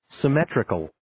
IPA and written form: sɪ'metrɪkəl (Symmetrical)